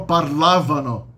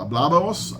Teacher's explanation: aí o espanhol tem um retrocesso do acento